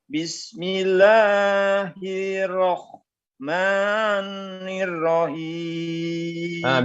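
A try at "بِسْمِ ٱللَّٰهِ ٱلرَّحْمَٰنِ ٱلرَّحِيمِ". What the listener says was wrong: Kemudian bila hi tu masuk huruf ra tu, dia ada sabdu kan? Jadi bacaannya hirrah. Dia masukkan huruf ra. Hirrah. Hirrah. Kemudian huruf ha tu jangan baca macam huruf kha pula. Kalau tadi Haji baca, dia seakan-akan macam huruf kha.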